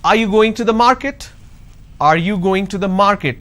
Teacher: so when I say are you going to the market there is a rising tone